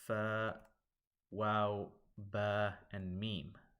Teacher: the lip letters whose articulation point is from the lips